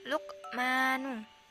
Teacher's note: qalqalah sugro, karena khof disukun dan posisinya berada di tengah-tengah kalimat